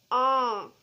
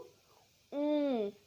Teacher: जब हमने चंद्र बिंदु लगाकर पढ़ा तो इसकी वॉइस इसकी साउंड नोज और माउथ दोनों से आई